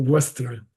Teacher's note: A proper Sanskrit initial V is a cross between a V and a W in English.